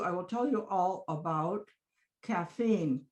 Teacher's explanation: you keep the length of the syllables even at low pitch